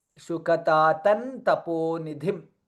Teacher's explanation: Anuswara followed by Takara, hence the last letter of Tavarga, which is Na.